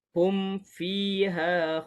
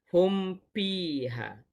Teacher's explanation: Izhar mim sakinah pada fa dan juga waw lebih kuat izharnya. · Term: izhar syafawi